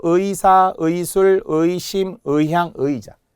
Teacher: 이중모음 의니까요. 첫 음절의 의도 100% 의로 발음해야 되겠죠